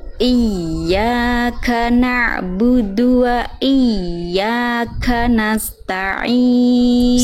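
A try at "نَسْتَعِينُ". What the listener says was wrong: Di sini sin jangan sampai terputus. Nasta'in, tapi nasta'in.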